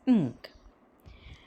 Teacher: And if we go through the description, for the articulation of ng, a closure is formed between the back of the tongue and the soft palate. The soft palate is lowered to allow a free passage of air through the nose. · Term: velar nasal